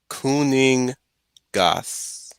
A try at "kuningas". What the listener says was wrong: Bit shorter, and the ng sound is like kuningas. N. No, it's pronounced, but it's the uh, hmm, I'm trying to figure out the English